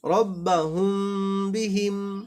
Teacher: মিম সাকিনের পরে যদি বা আসে তাহলে মিম সাকিনে গুণনা করতে হবে, কিন্তু দুই ঠোঁট কাছাকাছি নিয়ে